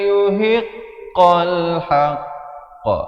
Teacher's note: Saya waqaf sekali lagi di situ dan diberikan lantunan kerana kita waqaf pada huruf qaf. Qaf merupakan huruf qalqalah. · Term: qalqalah akbar